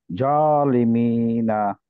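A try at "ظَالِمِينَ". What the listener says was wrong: এটা জ না, এটা হচ্ছে দ, ভ কিন্তু গোল করে,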